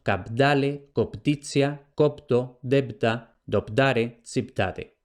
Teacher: la síncopa, es decir, la pérdida de la vocal, unas veces la que está inmediatamente antes, otras veces la que está inmediatamente después.